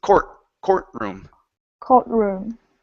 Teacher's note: instead of pronouncing the T in the middle we say courtroom